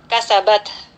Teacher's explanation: kita penuhi sifat hamas dari ta sukun ini dengan menghembuskan nafas kita sedikit ya